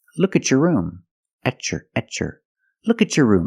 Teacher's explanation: look at some other situations where T makes a CH sound when you have a t before a y in two separate words and you link the pronunciation of the two two words you will hear the CH sound